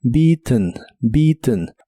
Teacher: termina con ten Aunque la e del final se pronuncia muy suave · la terminación de este verbo se hace como haciendo un golpe de aire desde la nariz